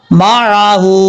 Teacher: میم کے بعد جو آئین ہے، آئین کو کلیئر کرنا، حمزہ کی آواز نہیں آنی چاہیے، معہو نہیں پڑھنا، معہو، اس طریقے سے.